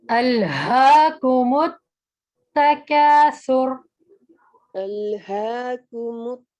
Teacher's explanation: ہا کا مخرج سینے سے نکلے گا